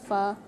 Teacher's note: तो जैसे हम पढ़ते हैं ना फ़ा, इस फ़ा को जब अब आप अदा करेंगे ना, तो इसको आपने सख्ती से अदा नहीं करना है। इसके अंदर ज़ाफ़ है, इसके अंदर पस्ती है